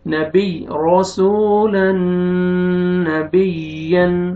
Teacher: را کا موٹا پڑھیں گے، را، آگے واو مد ہے، واو جزم سے پہلے پیش ہے، سین کو کھینچنا ہے، تنوین کے بعد حروف یرملون میں سے نون ہے، ادغام غنہ کے ساتھ